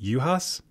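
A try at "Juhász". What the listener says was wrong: Knock off the J, knock off the Z.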